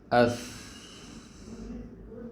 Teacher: پستی بھی ہے آواز میں اور سانس جاری بھی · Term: ہمس